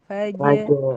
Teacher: Sifat yang sukun sebelum ro. Jim itu sifatnya dia syiddah dan tipis. Jadi, Ibu si Jim harus tipis dan harus sidah dan plus qalqalah.